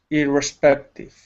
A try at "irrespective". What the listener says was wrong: Yeah, you're copying some Americans. You got to be careful. Canadians too. We tend to get lazy with our trailing consonants. So just because others are very sloppy with it, don't you copy us. It's not that you need to say it this way, indiscriminately.